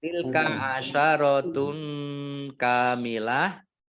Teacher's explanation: domah tanwin bertemu dengan huruf kaf, bacaan ikhfa dibaca samar-samar · kamilah tak marbutoh, ini karena wakof maka menjadi dibaca hak, ya. Dibaca hak sukun kamilah, dibaca pendek karena tidak ada tanda panjangnya.